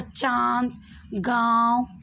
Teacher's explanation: इसका उच्चारण मुंह और नाक दोनों से होता है उसे अनुनासिक कहते हैं